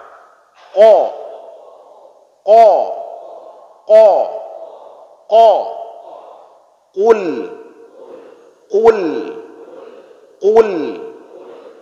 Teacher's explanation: Di pangkal lidah keluar dua huruf. Di bagian dalam itu keluar huruf qa. Ya, qaf. Qa.